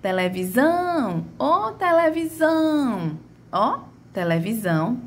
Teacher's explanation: a minha última sílaba foi a sílaba que mais se arrastou, foi a minha sílaba de maior tonicidade